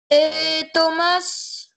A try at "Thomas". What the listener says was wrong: Thomas, on ne prononce pas le S, oui.